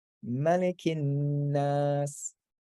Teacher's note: when you double up the noon, you can like hold it for a little bit, make it a little like nasalized